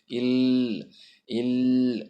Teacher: நுனி நாக்கு வந்து மேல் பல்லினுடைய அடியை போய் தொடும் அதே சமயத்துல அந்த நாக்கினுடைய ஓரங்கள் முழுக்க தடித்து மேற்பல்லை தொடுவது போல நெருங்கும் இல் இல் சொல்லி பார்த்தீங்கன்னா தெரியும் அப்படி சொல்லுகிறபோது லகரம் பிறக்கிறது அப்படிங்கறத நம்ம · ஓரங்கள் நுனி நாக்கு வந்து மேல் பல்லினுடைய அடியை போய் தொடும் அதே சமயத்துல அந்த நாக்கினுடைய ஓரங்கள் முழுக்க தடித்து மேற்பல்லை தொடுவது போல நெருங்கும்